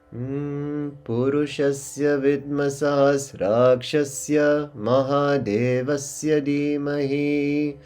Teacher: And then the I sound will be stretched a bit here because we're coming to the end of that particular verse. We have a long vertical, so we'll stretch the I a little bit.